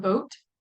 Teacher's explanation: your lips are also rounded um but your tongue is kind of more in the middle of your mouth isn't pulled up quite as high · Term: midback vowel